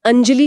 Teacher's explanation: अंजलि में अ के ऊपर बिंदी है और फिर ज है। सहीकि ज च वर्ग से है तो वह बिंदी न्य का रूप ले लेगी